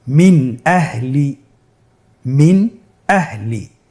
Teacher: তাহলে আমরা এখানে নুন সাকিনকে স্পষ্ট করে পড়ব, গুন্না ছাড়া পড়ব। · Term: ইজহার